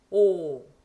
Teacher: 입술 모양을 좀 더 분명하게 하고서 처음과 끝이 똑같이 오 하시면 됩니다.